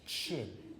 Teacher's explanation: You start with a T, release the air and followed by the sh.